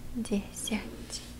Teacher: десять, also with the soft T in the end